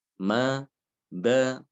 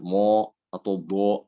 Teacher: Jadi ketika diucapkan tidak disertai dengan naiknya pangkal lidah ke atas ya. Jadi suaranya itu cenderung ke arah bawah sehingga terdengar tipis, tidak tebal. Ma, ba ya. Bukan mo atau bo, tidak demikian ya, tapi dia tipis.